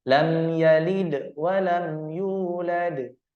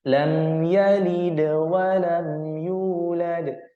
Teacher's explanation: qalqalah ringan ini cara membacanya tidak boleh memutus suara pantulan ke huruf berikutnya. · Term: qalqalah sughra